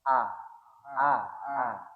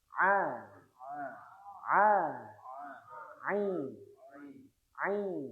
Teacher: Ain ain ain ada di huruf halfi ada di tenggorokan tapi agak ke bawah ada tekanan ya ketika kita membaca ain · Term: huruf ain